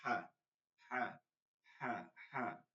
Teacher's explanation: হলকের মধ্যখান থেকে পড়তে হবে